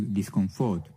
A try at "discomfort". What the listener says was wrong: That's a word stress shift. Discomfort, not discomfort. So put the stress on that second, not the third syllable there.